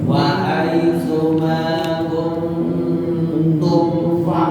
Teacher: jadi nggak ada lama mim itu semuanya sebentar. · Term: izhar syafawi